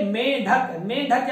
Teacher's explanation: आप करिए मेंढक, मेंढक जब बोलेंगे तो आपके नासाद्वार और मुख दोनों से वायु बाहर निकलती है। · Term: अनुनासिक